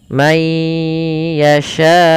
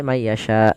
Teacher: Maka lafal yasha itu seminimal-minimal kita baca dengan 4 harakat. May yasha, tidak boleh may yasha karena dia dasarnya 4 harakat. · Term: mad wajib muttasil